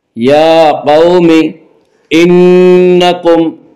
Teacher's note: نون مشدد غنہ ہوگا، غنہ کی مقدار 1 الف ہے